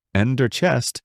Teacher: In America, people say ender chest with emphasis on the first word, ender chest, making it sound clear and firm. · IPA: /ˈɛndər tʃɛst/